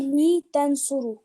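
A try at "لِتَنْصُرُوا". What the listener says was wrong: Li tansuru, wow will be there. So you have to say wow. You know that wow. So if you say tansuru, it means wow is not there. You have to stretch it.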